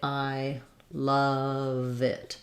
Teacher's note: So we link love and it together